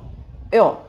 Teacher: Это как будто бы вы сказали «ё», только без «й», понимаете? Без первой части. Вот это мягкое «ё», без «й», «ё». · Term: Звук «ё»